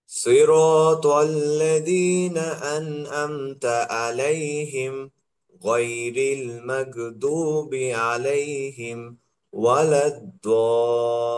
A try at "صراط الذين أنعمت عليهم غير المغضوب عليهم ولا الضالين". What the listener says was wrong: আলাইহিম বলে আপনার দেরি করা যাবে না, যেহেতু একটা বাক্য এখানে, ভিন্ন বাক্য না, যে এই বাক্য শেষ যদি হয়, ওয়াকফ হয়, তখন ওকে থামতে হয়।